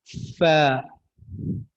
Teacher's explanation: सनाया उलिया, ऊपर वाले दो दांत, उनको आप नीचे वाले होंठ जो है उसके दरमियान में रखे और फा अदा करें, ठीक है। फ।